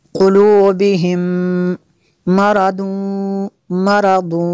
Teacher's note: میم ساکن کے بعد دوسری میم ہے، یہاں پہ ادغام شفی ہوگا اس لیے یہاں پہ غنہ کریں گے۔